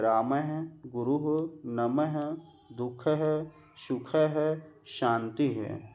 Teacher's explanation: विसर्ग हमेशा शब्द के अंत में आता है और विसर्ग का उच्चारण हा जैसा हल्का श्वास छोड़ते हुए होता है